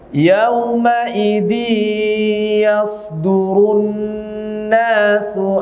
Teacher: tidak boleh ditekan disertai suara dari rongga hidung [Musik] Jangan ditekan Diak Jangan ditekan yaumidin yasdurunasu astatan liyurau aalum